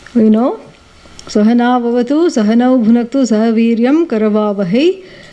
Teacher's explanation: whatever the last vowel sound, it is dragged and it is on a higher tone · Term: Swarita